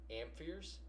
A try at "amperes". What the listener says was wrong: Where's the you're saying ampheres? Where's the H? You're putting an unnecessary H in there. Amperes.